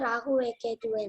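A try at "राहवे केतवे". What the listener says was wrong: See, Rahuve Ketuve, no. You should say Rahave Ketave. Okay? Okay? You cannot say Rahuve.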